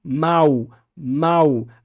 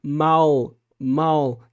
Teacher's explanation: É claro que há regiões ali em que há sim uma realização mais próxima do português europeu, mas no geral, a realização do L em coda, né, na posição final da sílaba no português brasileiro, é feita como se fosse um U de uma semivogal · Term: semivogal U